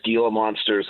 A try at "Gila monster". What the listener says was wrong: Pronounce Hela, not Gila, but that's okay.